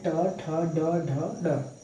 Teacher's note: ट वर्ग मूर्धा से बोला जा रहा है